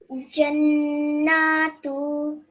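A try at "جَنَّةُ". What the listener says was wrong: And you made it longer than it should be. So have another go at saying this.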